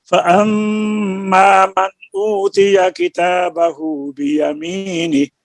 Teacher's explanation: फअम्मा में मीम मुशद्दद की वजह से एक अलिफ की मिकदार में गुन्ना होगा